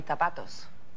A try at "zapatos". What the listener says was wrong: No, you're saying it with like a TH sound.